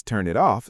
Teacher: linking makes turn it off sound like one word